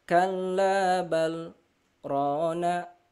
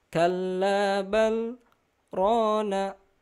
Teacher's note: jadi ada jeda tapi tidak mengambil nafas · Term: saktah